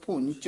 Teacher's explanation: ਭੁੰਚ ਚਚੇ ਨਾਲ ਬੋਲਣਾ ਭੁੰਚ ਝ ਨਹੀਂ ਲਾ ਦੇਣਾ